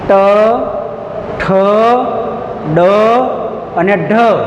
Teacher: જીભ વળાંક લે છે, થોડી જીભનો વળાંક થાય અને એકદમ થડકારા સાથે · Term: મૂર્ધન્ય વ્યંજન